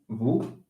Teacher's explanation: So maybe this is how you say v, because it's a bilabial fricative